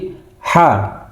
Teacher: Jadi pangkal tenggorokan. Suaranya sangat ringan.